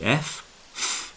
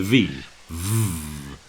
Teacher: If you can go f, all you have to do is add the vibration and go v.